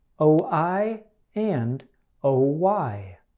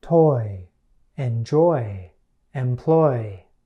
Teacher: Your tongue should be relaxed. It should begin in a middle position toward the back of your mouth and end in a high position toward the front of your mouth. The oi sound has two common spellings, and they are pretty easy to remember. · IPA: /oɪ/